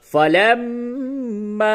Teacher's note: زبر فا لام میم زبر لم میم الف زبر ما فلما میم مشدد ہے غنہ ہوگا